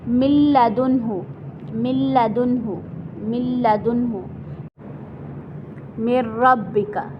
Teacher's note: ادغام تو ہمارا ہوگا لیکن غنہ نہیں ہوگا. ٹھیک ہے، ناک میں آواز نہیں لے کر جائیں گے ہم، تو بغیر غنہ کے ہم ان کو پڑھیں گے.